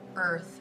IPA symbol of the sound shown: ɜ